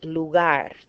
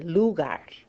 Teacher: Because it ends in a consonant other than N or S, so stress, natural stress goes on the last syllable.